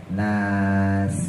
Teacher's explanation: untuk Sin ujung lidah taruh bawah antara gusi bawah sama gigi bawah